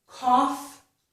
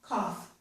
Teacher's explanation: So the word cough has the aw and the f sound. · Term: aw vowel sound